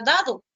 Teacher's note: el fonema oclusivo dental sonoro es representado por la letra d